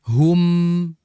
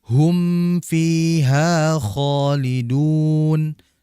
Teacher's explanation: sempurnakan makhrajnya, yaitu apa, di kedua bibir. Hum disertai dengan makhraj yang mukamil, yang menyempurnakan mim tadi, yaitu gunnah di hidung.